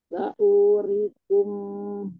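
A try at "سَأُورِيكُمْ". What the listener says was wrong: Ih, panjang. Saurirnya juga panjang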